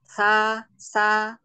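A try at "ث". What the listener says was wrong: Bedakan mi sa. Sa, ujung lidahnya keluar sedikit. Jangan diain mi, jangan sa.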